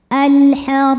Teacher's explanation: huruf ro dibaca secara tafkhim karena berbaris di atas maka dibacanya tebal. Alhar ro mad thobi'i e zahiri ya. · Alhar ro mad thobi'i e zahiri ya. Karena ada alif didahului fathah maka panjang rnya dua harakat